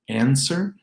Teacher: There's no W in answer, answer.